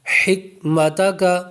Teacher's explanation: حکمتا قو نہیں پڑھیں گے، باریک کر کے پڑھیں گے۔ حکمتک، حا جب پڑھیں گے تو حلق کے درمیان سے آواز نکالیں گے